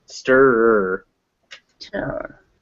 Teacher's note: stirrer can be very difficult because it's schwa R, schwa R